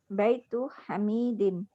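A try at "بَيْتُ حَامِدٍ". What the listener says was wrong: haknya panjang, mi-nya pendek.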